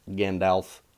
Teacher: pronouncing him like that again golf the a is ah okay I'm pronouncing it like ah not o